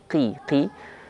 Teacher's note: Qaf di sana dalam kondisi nisbi, tafkhim nisbi, alias tafkhimnya itu secara teori, tapi secara bunyinya dia lemah.